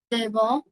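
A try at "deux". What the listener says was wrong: না not দেব but দ হবে না এটা ও এটা এই লেটারটা ও তাহলে দো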